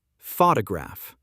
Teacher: Photograph stress on first syllable.